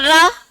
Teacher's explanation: सिर्फ रा बोलते समय ऊपर स्पर्श हो रही है लेकिन वापस नहीं आ रही है, वहीं पर लटकी हुई है, लपटी हुई है, यानी जीभ लुढ़क के वहीं चिपक गई। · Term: प्रकंपित